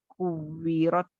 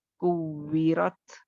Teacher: کاف بھی آپ کو اوپر کی طرف نہیں جائے گا، یعنی موٹا نہیں ہوگا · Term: انفتاح